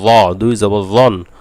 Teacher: আসলে জ বললে পুরো উচ্চারণটাই হবে না, কারণ জ একটি মোটা অক্ষর, ইস্তেআলার অক্ষর, মোটাও করতে হবে এবং জিহ্বার আগা দিয়েও বলতে হবে।